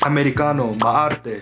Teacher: In Tagalog, we tend to roll our R's a lot.